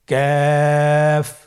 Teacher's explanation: কাফ উচ্চারণের ক্ষেত্রে অবশ্যই পাতলা করে উচ্চারণ করতে হবে এবং 3 আলিফ টেনে পড়তে হবে। · কাফের মাখরাজ হলো জিহ্বার গোড়া থেকে একটু আগে বাড়িয়ে তার বরাবর উপরে তালের সঙ্গে লাগিয়ে উচ্চারিত হয়।